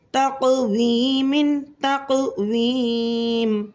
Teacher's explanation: قاف میں قلقلہ صغریٰ ہوگا کیونکہ قاف ساکن حالت میں اس کلمے کے درمیان میں آ رہا ہے، اور یا مدہ کو ہم 3 الف کے برابر کھینچ کر پڑھیں گے کیونکہ وقف کی وجہ سے میم یا مدہ کے بعد ساکن ہو رہی ہے۔